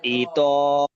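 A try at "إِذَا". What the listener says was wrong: ইজ, তো নয়,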